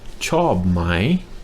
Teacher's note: you put my with a rising tone after it, and that means do you like?